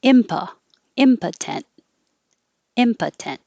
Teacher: the stress is on the first syllable and the o changes to uh